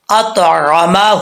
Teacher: عین کو کلیئر کرنا ہے، حمزہ نہیں پڑھنا